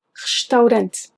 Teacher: The first E in restaurante should be mute.